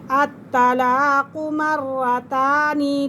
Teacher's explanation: الطلاق مرتان، تا کھڑا زبر تا، تو یہاں طا نہیں پڑھیں گے، تا ہی پڑھیں گے